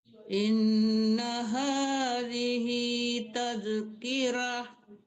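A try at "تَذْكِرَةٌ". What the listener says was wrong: Tazkirah. Tebalkan rohnya. Kirah, jangan kirah, roh ya, tebal roh.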